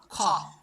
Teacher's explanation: যখনই আমরা খ বলবো তখন কিন্তু হ উচ্চারিত হবে। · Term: মহাপ্রাণ বর্ণ